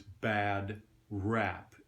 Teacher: It's the ash sound. A lot of people call it a flat A. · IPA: æ